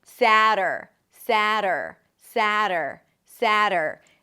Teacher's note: The tongue flips against the upper palate and pulls back for the R.